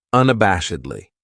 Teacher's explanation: This adverb has five syllables and the stress is on that third syllable that bash unabashedly. That second syllable has that schwa that uh sound